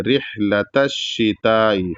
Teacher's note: لتا میں جو تا ہے وہ پتلا ادا ہوگا کیونکہ تے ہے، اور تے پتلا ادا ہوتا ہے اور تو جو ہے موٹا ادا ہوتا ہے، تو اس کو پتلا ادا کرنا ہے.